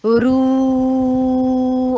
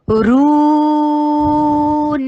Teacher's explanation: ہونٹوں کو گول کیجئے اور پھر 4 حرکہ لانگ کیجئے، رون، رو کرتے ہوئے نون کی آواز نہ آئے